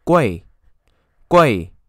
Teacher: the fourth tone, very short